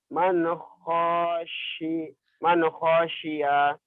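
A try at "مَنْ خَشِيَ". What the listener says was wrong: Salah. Masih salah, nggak ada yang panjang di situ. Man khosya. Man khosya. Nggak ada yang panjang.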